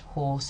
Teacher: The vowel in horse, in English, horse, has quite a lot of lip rounding, so we might want to show that it's more lip rounded than the cardinal vowel.